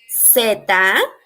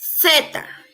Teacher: seta is the correct pronunciation here in America but if you are in Spain they will pronounce Theta